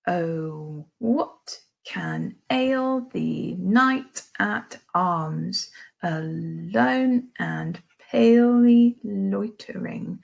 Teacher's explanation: the first syllable is unstressed and then the following is stressed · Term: iamb